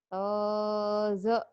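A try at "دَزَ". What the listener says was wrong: Bukan to ini mah. Dozo. Ketuker. Do dan zo.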